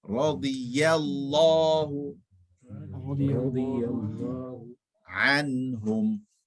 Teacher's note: First part, very full mouth. Anhum, all empty mouth.